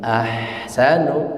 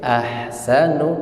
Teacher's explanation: Iya, baik, perhatikan pengucapan ahsanu. Ha ketika disukun dia sifatnya rakhawah. Rakhawah itu mengalir dia.